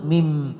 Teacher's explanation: Jadi mim itu adalah makhraj asy-syafatain, dua bibir yang tertutup.